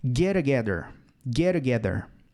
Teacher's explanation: Mas na hora que você fala, o som se junta. É como se fosse uma palavra só.